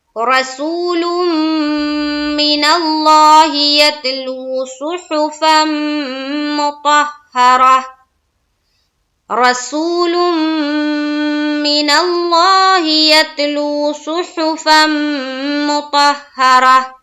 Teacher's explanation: را زبر را کو پر کریں گے. سو سین واو پیش سو رسو واو ساکین اور اس سے پہلے پیش واو مدہ کا قاعدہ.